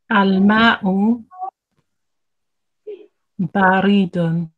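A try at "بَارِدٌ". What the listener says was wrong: Okay, try not to elongate the ra. You're saying baridun. It's not baridun. Baridun.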